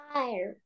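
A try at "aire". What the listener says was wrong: Оце «е» теж читається. Це не англійська мова. I. У нас всі букви читаються. I. E.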